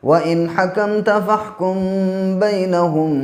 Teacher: نون ساکن کے بعد ہا ہے، اس کی وجہ سے یہاں پہ غنہ اخفا کچھ بھی نہیں ہوگا، کیونکہ حروف حلقی کا ہا ہے۔